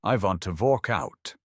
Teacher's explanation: In German, W sounds like V.